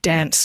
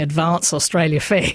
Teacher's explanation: So people who might say dance normally or advance will sing advance Australia Fair, you know, so they'll trot out what's perceived to be a posher vowel.